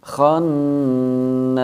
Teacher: Hukum bacaannya adalah gunnah, dengan kita baca mendengung dengan panjang harokat 2 harokat.